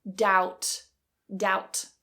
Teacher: make sure the b is silent and that vowel is an AU